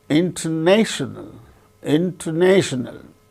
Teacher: So, the third syllable gains primary stress, first syllable gains secondary stress.